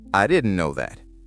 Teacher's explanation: The T disappears. Americans drop final T sounds all the time.